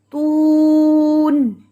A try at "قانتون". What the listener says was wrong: اوہو، اینڈ پہ نون کی آواز کو آپ نے ایسے جھٹکا نہیں دینا، تون.